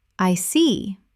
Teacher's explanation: When you show understanding with, I see, your tone drops slightly to show calmness. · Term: falling tone